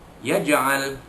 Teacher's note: jim sukun itu di tengah kalimah dia dibaca qalqalah surah, ya, dilantun dengan bunyi sedikit saja